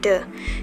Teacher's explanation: De itu berarti jika bergetar, de itu voiced. Kemudian de itu ada di kategori alveolar, berarti voiced alveolar. Kemudian saat mengucapkan bunyi de, itu udara terhenti total di dalam mulut kita, stop.